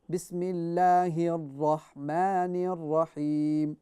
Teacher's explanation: when you say Bismillahir Rahman, Ra is full mouth with the fatha.